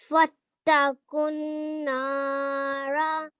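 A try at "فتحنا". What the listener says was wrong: Brilliant. Well done, mashallah. That was really nicely read.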